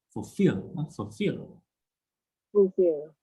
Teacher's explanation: drop your voice when you pronounce full